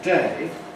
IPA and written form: deɪ (day)